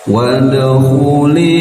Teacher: Wad da sukun pantulkan karena dal bagian dari huruf qalqalah